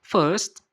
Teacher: karena mereka kadang tidak membaca huruf r setelah vokal